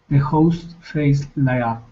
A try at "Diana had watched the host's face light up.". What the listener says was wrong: Add that extra S. Hosts.